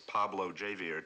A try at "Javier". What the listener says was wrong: Javier. Javier, not Javier. The J is silent. You pronounce it like a ha. Javier.